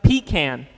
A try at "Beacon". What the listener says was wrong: No, not pecan. It's beacon.